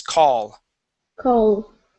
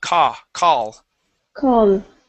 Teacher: Make sure to use an ah sound instead of o.